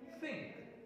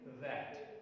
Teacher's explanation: we have a pair of voiceless dental and voiced dental.